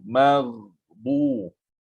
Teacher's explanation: Ghain sukun, kita sukunkan dia, juga dia mengalir.